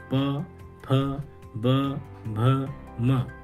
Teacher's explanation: इन सब का उच्चारण ओष्ठ से किया जाता है। ठीक है। इसलिए इनको ओष्ठ वर्ण कहते हैं।